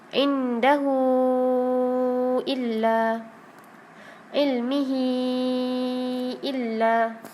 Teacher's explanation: Tapi kalau tawilah, ha tu bertemu dengan hamzah, maka kita baca sebanyak 4 dengan 5 ataupun 5 harakat. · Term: mad silah tawilah